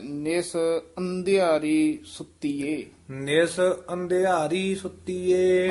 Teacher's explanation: ਇਹ ਨਿਸ ਕਸ ਕੇ ਨਹੀ ਬੋਲਣਾ ਨਿਸ ਪੋਲਾ ਉਚਾਰਨ ਕਰਨਾ ਹੈ